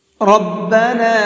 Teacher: را کو پر کر کے پڑھیں گے یعنی کہ منہ بھر کے پڑھیں گے